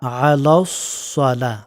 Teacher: আইনটা গলার মধ্যস্থল থেকে এভাবে হবে।